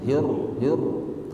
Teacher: Coba suara ro-nya ada takrirnya Pak, ada getaran sedikit.